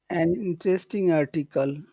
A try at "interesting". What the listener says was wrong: Where's the accent in that word? Interesting. Inter- or you could say interesting. Interesting. Interesting. Not not interesting. Interesting. Yeah, so it's the first syllable that you want to emphasize. Yeah, it should be the first one. Interesting. Interesting.